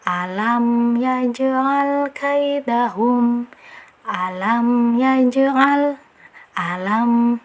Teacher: Walaupun hukum bacaannya jelas tetap harus ada aliran suara dari sifat huruf mim ini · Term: sifat tawasud